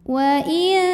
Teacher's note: dengung Arab ikhfa Arab sebab Nun sukunnya menghadapi huruf Ta Maka cara bacanya bunyi nunnya disamarkan ke huruf ta dengan disertai dengungan artinya saat mengucapkan huruf nun kita sudah siap-siap ke makhraj huruf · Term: ikhfa Hakiki